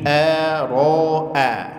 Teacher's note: Yang pertama hamzah tipis, kemudian huruf ra tebal, dan hamzahnya tipis lagi. Nah, ini hati-hati, jangan sampai huruf-huruf tipisnya terpengaruh menjadi tebal, dibaca ara'ai, ara, tidak, tapi ara'a.